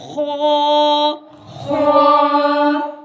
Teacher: باریک گلے سے ادا ہوتا ہے، ہا، ہا، خو، خو، خوا کو موٹا پڑھتے ہیں، یہ بھی گلے سے ادا ہوتا ہے لیکن اس کو موٹا پڑھا جاتا ہے، خو، خو، دال، دال،